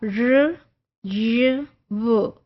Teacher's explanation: फिर अप्रॉक्सीमेंट्स से जो हमने कहा था कि दे points of articulation come close to each other but they don't block the passage completely, so there is friction, but friction is so minute, so minor that it's very difficult to perceive that